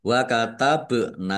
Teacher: Wa katabna, bak sukun, bacaan kolkolah, dibaca memantul, ditampakkan pantulannya. Nun fathah alif, mat tobi'i, dibaca panjang 2 harokat.